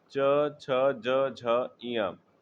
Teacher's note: च वर्ग च, छ, ज, झ, ञ। इसका उच्चारण स्थान क्या है? तालु है।